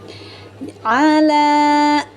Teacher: Ain itu keluarnya dari tengah tenggorokan. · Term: huruf ain